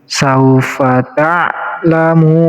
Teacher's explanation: Mu di sini dibaca panjang bisa sampai 6 harokat. Namanya mad arid li sukun.